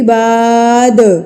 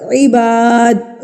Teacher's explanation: دال وقف کی صورت میں ہمارے پاس آ گیا ہے تو یہاں پر بھی ہم اس کو ہلا کے پڑھ دیں گے. عباد، یہ قلقلہ کرنا ہوتا ہے.